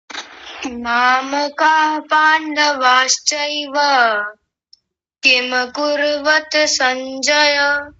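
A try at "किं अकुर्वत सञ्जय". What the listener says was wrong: किम कुर्वत नहीं, कुर्वत, त को भी पूरा करना है, फिर से बोल दीजिए।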